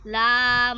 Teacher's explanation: জিহ্বা আগার কিনারা সামনের উপরের দাঁতের মাড়ির সঙ্গে লাগাইয়া